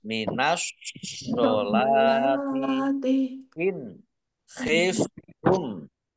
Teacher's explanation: nun sukun bertemu dengan huruf kha bacaan idhar dibaca jelas